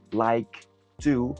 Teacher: ese sonido de K lo vamos a mantener y vamos a liberar el aire con el sonido de la t Así que like to suena como like to si notas como